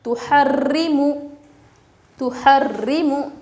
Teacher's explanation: را کے نیچے زیر، را کو باریک پڑھیں گے